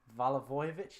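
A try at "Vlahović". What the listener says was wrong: Valavojevic. Lad, where are all those syllables on this? Vlahovic.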